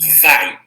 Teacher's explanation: dos dois fonemas vocálicos A e I, o A é pronunciado com mais força. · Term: semivogais